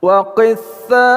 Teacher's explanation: tha diperpanjang dengan mad wajib muttasil lima harakat